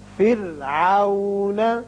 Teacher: یہ را باریک ہوگا اس لیے کہ پیچھے کسرہ یعنی زیر ہے